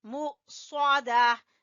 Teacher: حمزہ کے اوپر جھٹکا دیں گے، مؤصدہ، صاد کو پر پڑھیں گے۔